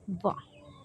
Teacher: दंत और ओष्ठ से हम वा वर्ड का उच्चारण करते हैं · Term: दंतोष्ठ